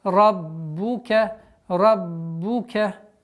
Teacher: Раббука, ра твердый, удваиваем, четкое произношение звука огласовки. Дамма, раббука, раббука.